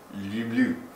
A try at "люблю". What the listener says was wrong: Hey, enunciate. Okay, but remember, it's not lube. It's lube with a Y, okay? It's lube with a Y, yeah. So it's like L-Y. It's like lube. Lube. Lube. Люблю. Alright, that's how you say love.